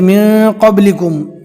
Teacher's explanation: جزم والے نون کو ہم نے ناک میں چھپا کر پڑھا، یہاں پر اکفا کا قاعدہ ہوگا۔